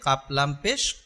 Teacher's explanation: দুই নক্তালা কাফ এটা গলার ভিতর থেকে উচ্চারণ হবে